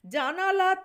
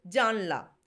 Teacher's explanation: স্বরধ্বনি লোপ হচ্ছে এবং ব্যঞ্জন ধ্বনি কাছাকাছি হয়ে যাচ্ছে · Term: মধ্য স্বরলোপ